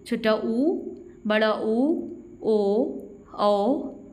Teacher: ऐसे स्वर जिनका उच्चारण करते समय ओष्ठ का आकार गोल हो जाता हो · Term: वृत्ताकार या वृत्तमुखी स्वर